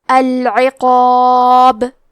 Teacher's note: آخری میں با پہ رکیں گے تو اس پہ جزم سے رکیں گے، تو یہاں با کا حکم ہے قلقلہ، لہذا ہم یہ حرف کو ہلاتے ہوئے یہ کلمہ کو پڑھیں گے